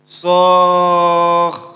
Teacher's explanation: Cara hentinya ialah berubah menjadi ha.